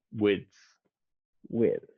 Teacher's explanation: there is that that slight d sound before the th that you need